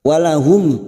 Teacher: mim sukun bertemu Ain izhar syafawi mim sukun dibaca jelas tanpa mendengung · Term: idhar safawi